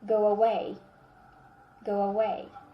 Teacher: So go ends with the sound O. That's why we needed to insert W.